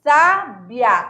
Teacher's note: quase o I não se pronuncia